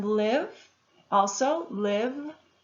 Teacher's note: I'm using my vocal cords to make that V sound.